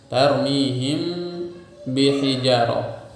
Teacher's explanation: dinamakan dengan ikhfa syafawi karena mim mati keluar dari syafawi, kemudian ba juga keluar dari syafawi